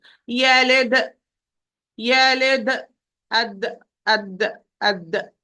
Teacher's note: The tip of the tongue must touch the alveolar ridge and close. There is no distance in between. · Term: qalqala